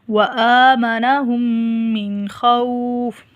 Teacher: یہاں پر یہ نون ساکن ہے، آگے خا ہے، یہاں پر آواز ناک میں نہیں جائے گی